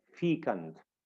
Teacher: Fecund is an adjective, and we see that in the phonetic transcription between the two slashes, that the stress is placed on fecund, the first syllable, feek, we say fecund.